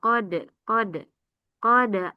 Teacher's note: Ah dal sukun ada qalqalah.